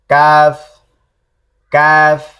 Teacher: এরপরে জিহ্বার গোড়া থেকে একটু আগে বাড়ায়া, জিহ্বার গোড়া থেকে একটু আগে বাড়ায়া কাফ